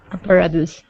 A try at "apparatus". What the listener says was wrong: Very good. Nice job.